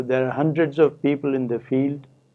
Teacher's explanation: there are eight words in the first sentence but only three are stressed